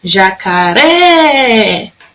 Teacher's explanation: A sílaba que durou mais tempo foi o ré de jacaré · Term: sílaba tônica